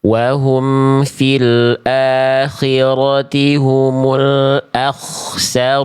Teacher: Kho ketika sukun tebal jadi lebih diangkat lagi pangkal lidahnya. Wahum fil akhirati humul akhsarun. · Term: Kho sukun